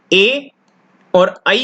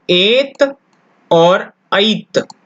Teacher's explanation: ए दयितोः कंठ तालु, वापस से बोलेंगे, ए दयितोः कंठ तालु, ठीक है। अर्थात ए और ऐ का उच्चारण स्थान कंठ तालु होता है।